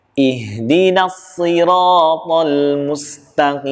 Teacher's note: H di sini pada kalimat ihdina itu tempat keluar hurufnya adalah di pangkal tenggorokan. Sama seperti huruf hamzah.